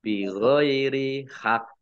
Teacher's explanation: qaf tasdid karena wakof, maka ini qafnya dibaca double. Maka ditahan ya hak, tidak dibaca hak, tidak gitu ya, tapi ditahan, ditekan hak, bi ghairi hak.